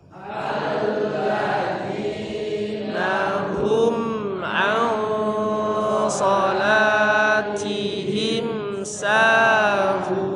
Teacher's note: huruf SH nun sukun ketemu dengan huruf SH dibaca ikhfa dan ikhfanya karena setelahnya adalah huruf SH yang punya sifat tebal ya maka ikhfanya juga tebal